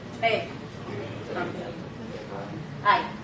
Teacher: So we start and end on the same note.